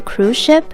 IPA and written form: kruz ʃɪp (cruise ship)